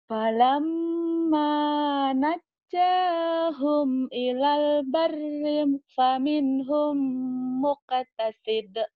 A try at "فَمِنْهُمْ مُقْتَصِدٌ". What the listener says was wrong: Pendek ya di situ, muqtasid.